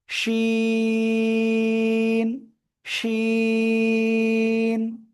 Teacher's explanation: জিহ্বার মধ্যখান তার বরাবর উপরে তালুর সাথে লাগিয়ে শা শা শব্দ করে আমরা এই অক্ষরটা উচ্চারণ করব।